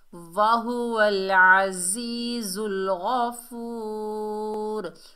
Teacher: وقف کی حالت میں را کا پیش ختم ہو گیا، را ساکن ہو گئی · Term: وقف بالاسکان